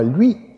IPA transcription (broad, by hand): lɥi